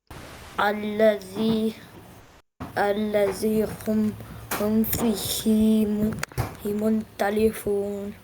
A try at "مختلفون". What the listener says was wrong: No, not muntali. It is kha and you're reading noon instead. مختلفون.